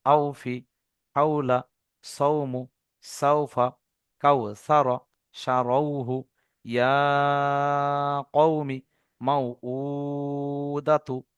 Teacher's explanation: ইয়া সাকিনের ডান দিকে যাবার থাকলে তাকে ইয়ালিন বলে। এই ওয়াউলিন এবং ইয়ালিন এগুলো কোনো টান হয় না, এর আওয়াজটাকে নরম আওয়াজে তাড়াতাড়ি পড়তে হবে।